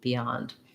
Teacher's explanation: because we have that yeah glide in the stressed syllable it gets a little tenser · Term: y glide